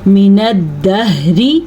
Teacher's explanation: ہا کے تلفظ کو چھاتی سے نکالنا ہے